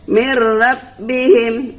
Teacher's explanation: idgham bilagunnah ya jadi artinya idgham tidak berdengung